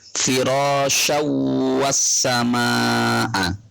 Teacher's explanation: Tanwin bertemu dengan wawu, maka harus dibaca dengan dengung. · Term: idgham bihunna